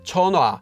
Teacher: it's not a strong sound it's a light extra bit of air